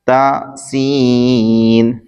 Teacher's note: ता जबान की नोक ऊपर के दांतों की जड़ से अदा होता है और सीन जबान की नोक दोनों दांतों के अंदरूनी किनारे से अदा होता है।